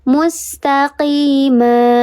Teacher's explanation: Dibacanya panjang 2 harokat, tanwinnya hilang. Taqima. Mad artinya panjang, iwad artinya pengganti. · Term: mad iwad